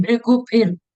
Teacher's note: Both the Bhas are Mahaprana.